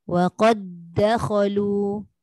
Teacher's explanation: Dia ada diberatkan pada dal kedua tu. Tekan sikit. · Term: dal bertemu dengan dal